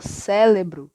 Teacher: com a lateralização do fonema R para o L , ou R para o L, e a troca do som